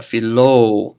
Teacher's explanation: I have Epsilon and Omega giving me a long oh